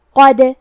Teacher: کلمت قد میں حرف القاف کو موٹی آواز میں پڑھنا ہے، کیونکہ دال پہ جزم ہے تو ہم حرف الدال کو ہلاتے ہوئے یہ کلمہ کو پڑھیں گے